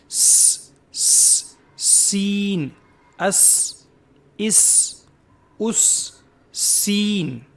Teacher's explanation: सीटी की आवाज इसके अंदर होती है। सीन सीन बारीक होता है। मोटा नहीं पढ़ा जाता है।